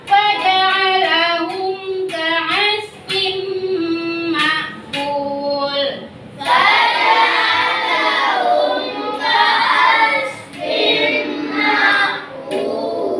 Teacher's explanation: Tanwin bertemu dengan huruf mim di sini adanya idgham bil gunnah. Cara membacanya yaitu berdengung.